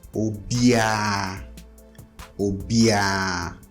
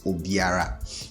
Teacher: to sound natural, most Ghanaians will say obia